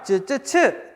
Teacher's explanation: 쯔, 쯔, 츠 딱 3개 있습니다. 그리고 이 친구들은 혓바닥과 센 입천장 사이에서 나는 소리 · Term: 센 입천장 소리